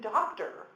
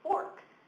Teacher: when it was unaccented o-r that's when I said /er/ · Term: r-controlled vowels